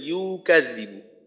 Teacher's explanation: আর ইউ কিন্তু এখনো একটু লম্বা হয়ে গেল, এর আগের বার যখন একসাথে পড়ার সময় পড়ছেন তখন ঠিক ছিল, কিন্তু এখন একটু লম্বা হয়ে গেল ইউ কাযযিবু।